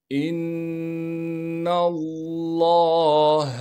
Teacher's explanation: حمزہ کو آگے نون مشدد سے ملائیں گے، اس لیے کہ نون پر تشدید ہے اور تشدید ہونے کی وجہ سے نون میں غنہ کریں گے۔